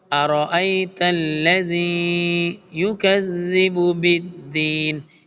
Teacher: حمزہ بریک اور را کو فل ٹائم بولڈ پڑھیں گے